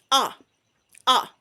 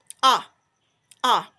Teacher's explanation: your mouth is slightly opened your tongue it's low in the mouth you push a out to say ah